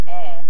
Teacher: But for me, I don't have an air. I don't have the air diphthong. I have air. I have a long air.